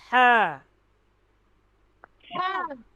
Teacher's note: ये वस्ते हलक यानी गले के दरमियान से ये दोनों हरूफ अदा होते हैं